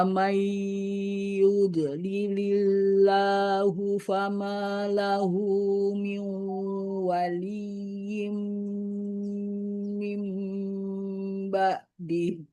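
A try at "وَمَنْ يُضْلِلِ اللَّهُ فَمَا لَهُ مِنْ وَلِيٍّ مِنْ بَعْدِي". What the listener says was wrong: Ya, ditahan seperti ada jeda ya, huruf dotnya itu ada istitolah namanya memanjang, bukan pantulan. Wa may yudlilillahu.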